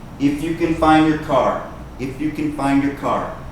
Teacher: This word, find, if you say it quickly, you will not hear the D. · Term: the D disappears